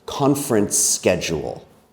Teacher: the ending sound of conference is S, the S sound. And the beginning sound of schedule is also S, the S sound. So we can say conference schedule like it's one very long word. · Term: linking